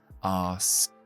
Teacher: Es decir, la S, S, la K, K, porque el verbo termina así. Y luego la ED, después de un sonido sorda, la pronunciamos como una T